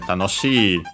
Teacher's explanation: Is accented, so yeah, tanoshi, low, high, high, and low. So the accent is on the shi, on the second to last syllable, well, second to last mora, to be precise